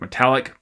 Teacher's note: you can get the t itself as an actual stop and it'll form like metallic because the stress shifts to the